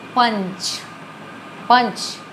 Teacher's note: हैं देखिए इनकी गाने जो है वह नाक से निकलती है यह नाक से ज्यादा ध्वनि निकलती है और मूह से कम ध्वनि निकलती है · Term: अनुस्वार